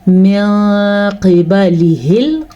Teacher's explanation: نون ساکن کو چھپا کے پڑھیں گے اور غننے کے ساتھ پڑھیں گے ، من قبلہ، قاف موٹا، ہا کے تلفظ کا دھیان رکھنا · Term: اخفاء